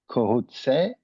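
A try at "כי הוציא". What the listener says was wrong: There's a chirkyod. Ki hotzi.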